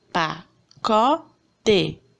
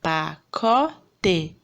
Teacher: A sílaba tônica é o có. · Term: paroxítona